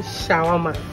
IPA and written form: ʃəˈwɑːrmə (Shawarma)